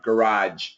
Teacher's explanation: So if we have these two words together and we say it quickly, you're probably going to hear a zh. But if you just hear this word, like put your car in the garage, it's almost always going to be a j. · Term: J sound